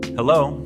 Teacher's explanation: Simple, casual, with a rising tone, like a question.